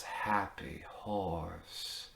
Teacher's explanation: has this very breathy quality followed by that o which also can have a very breathy quality to it